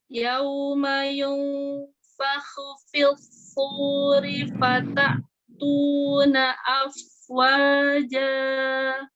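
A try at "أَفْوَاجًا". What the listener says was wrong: Ya, afwa, sempurnakan monyong huruf vau-nya. Afwa, alihkan dulu fa-nya. Atau afwa. Afwa atau afwa. Afwa atau afwa. Enak langsung dari fa ya. Lebih cepat ya. Iya, tapi dia kurang sempurna ya.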